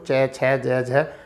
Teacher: तो स्पर्श संघर्षी का मतलब होता है कि ऐसे व्यंजन जिनका उच्चारण करते समय तो मुख द्वार से किसी से स्पर्श भी करें, किसी स्थान से स्पर्श भी करें और प्लस उष्मा भी दें।